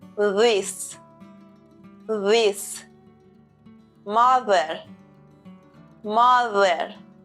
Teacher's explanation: The tongue position is the same as for the voiceless sound, but we have to add a vocal cord vibration. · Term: voiced th sound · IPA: /ð/